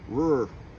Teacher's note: Well, that's really tough because you have that R-controlled vowel, the R, combined with the regular R. Then you have the dark L.